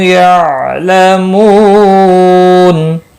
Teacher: نون وقف کی صورت میں نون ساکن پڑھا جائے گا، وقف بالاسکان ہوگا۔ مد العارض وقفی ہوگا، 3 سے 5 الف کے برابر کھینچ کر وقف کریں گے